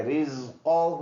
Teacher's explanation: ہا پر الٹا پیش ہے تو ایک الف کے اندازے سے لمبا کریں گے